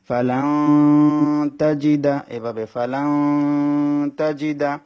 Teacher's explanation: নুন সাকিন একবার হরফ 15 টার মধ্যে ত একটা হরফ সেজন্য নুন সাকিনটাকে নাকের বাঁশির মধ্যে নিয়ে গুন্না করে পড়তে হবে